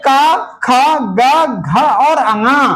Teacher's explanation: क ख ग घ और ण ये कंठ वर्ग है। ठीक है? कंठ वर्ग कहां से उच्चारण होता है इनका?